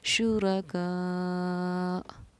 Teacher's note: حروف مدہ کے بعد حمزہ اسی کلمے میں ہے تو 4 الف کی مقدار کے برابر ہم اس کو کھینچ کر پڑھیں گے